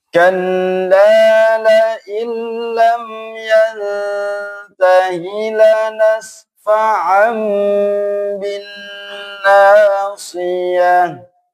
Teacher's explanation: Nunnya dilebur, lamnya langsung ditasydid, namanya idgham bila gunnah. Kemudian yang nunnya ya didengungkan dengan intonasi dua ketukan.